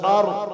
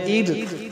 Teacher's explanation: اب یہ را موٹا ہوگا کیونکہ را سے پہلے زبر ہے، را سے پہلے زبر ہے پیش ہے تو پھر موٹا ہوگا، اگر زیر ہے تو پھر بریک ہوگا۔